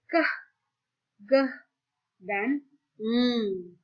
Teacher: bunyi yang dihasilkan dengan menaikkan lidah bagian belakang ke bagian velum disebut dengan velars